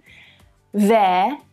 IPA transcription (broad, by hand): veə